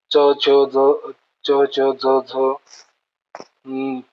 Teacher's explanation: तालूला touch करून म्हणजे जीभ लागून जे येतात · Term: तालव्य